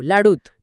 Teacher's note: इथे उ आणि आ एकत्र आले आणि फक्त उ शिल्लक राहिला कारण लाडू म्हणताना ओठ आधीच गोल झालेले असतात म्हणजे उ चा